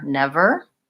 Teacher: whenever we have an R in English, it is always going to be the tight back American R. We never use just a vowel sound.